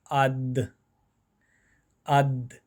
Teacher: میری زبان کی جو نوک ہے وہ ثنایا علیہ جو میں نے کل نام بتائے تھے، یعنی سامنے کے جو 2 دانت ہیں ان سے جا کے ٹکرائی ہے، تو دال ادا ہوا ہے۔